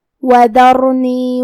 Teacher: پھر حرف الراء ہے. یہاں را کا حکم ہے تفخیم تو ہم را کو موٹی آواز میں پڑھیں گے